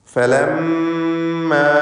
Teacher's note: ഇതിൽ മീം മുശദ്ദദയെ മണിച്ചുകൊണ്ട് ഉച്ചരിക്കണം.